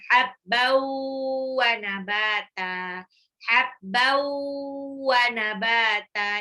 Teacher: Habbau, tanwin ketemu waw, idgham biguna.